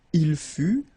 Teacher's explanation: final T not pronounced